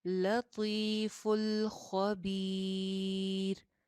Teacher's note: खौ के बारे में हमने पहले ही पढ़ा था कि ये मोटा है, तो खौ को भी मोटा रखिए।